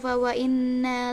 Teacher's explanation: terdapat bacaan gunna musyaddadah yaitu nun bertasyid